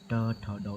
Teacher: ट ठ ड कहाँ कर रही है, मूर्धा में टच कर रही है